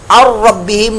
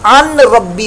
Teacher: नून साकिन के बाद रा आए, दिगाम बिला गुन्ना का कायदा लग रहा है